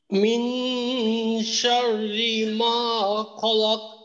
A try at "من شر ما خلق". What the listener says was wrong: আচ্ছা কলকলাটা একটু কম হয়ে গেল, কলকলাটা আরেকটু বেশি করতে পারলে আরো সুন্দর হবে। খলাক, আর রর উচ্চারণটা রি, যেন এটা ওই এই ধরনের না হয়। শাররি শাররি, আমরা জানি যে র যদি জের থাকে তখন পাতলা করতে হয়, তো এখানে পাতলা করাটা অবশ্যই পাতলা করতে হবে, এখানে মোটা করাই যাবে না।